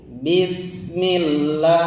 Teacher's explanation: Pangkal eta mah H besar ya. H besar itu dari pangkal tenggorokan, sama dengan huruf hamzah ya.